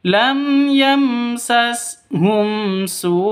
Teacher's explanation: Ada layar bertemu dengan hamzah panjang 5 ketukan, wajib karena bacaan wajib muttasil.